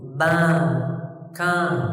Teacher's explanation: Sebagian orang dari Syam seperti Suriah, fathahnya itu sering pakai hidung